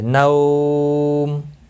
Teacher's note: نو واو لین ہے، تھوڑا نرمی کے ساتھ کھینچ کر ادا کریں گے